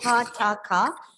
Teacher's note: when you pronounce the word starting with pa, ta, and ka, you have to make sure that you release a puff of air from the mouth. Okay, there is no vibration in the throat. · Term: voiceless plosives